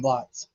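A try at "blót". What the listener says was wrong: Bloats. It is spelled like a blot, B-L-O-T, but it's a Norse term, so it's pronounced bloat. It's got a line over the O, I think.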